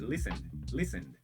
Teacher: corto o e, som do e desaparece